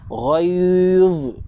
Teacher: Kalau kita baca dengan rapat gigi, kita dah baca dengan huruf zai. Sedangkan pada huruf ini adalah huruf dha.